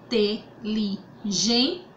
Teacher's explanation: paroxítona porque é a penúltima sílaba mais forte